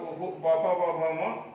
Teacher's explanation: इन वर्णों का उच्चारण स्थान ओष्ठ होता है।